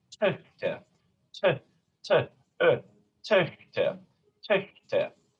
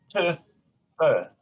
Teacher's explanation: Töchter, töchter, töchter. Here my tongue is almost in an A position, open A, bed, like bed, and I'm just rounding it into an open O position.